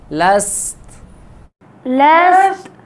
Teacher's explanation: ہاں تا کی آواز کو نہیں ہلائیں گے، تا میں قلقلہ نہیں ہوگا